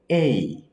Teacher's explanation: যেরকম এইখানে দেখেন ই, এটা হচ্ছে এ আর এটা হচ্ছে ই, এই দুইটা একসঙ্গে মিলে হয়েছে এই, এ আর ই দুইটা একসঙ্গে মিলে দুইটা স্বরে সন্ধি হয়েছে, মিল হয়েছে, বন্ধন হয়েছে, বন্ধন হয়ে একটা স্বরে পরিণত হয়েছে, একটা অক্ষরে পরিণত হয়েছে। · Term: সন্ধিস্বর